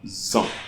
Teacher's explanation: liaison made by S will create a sound Z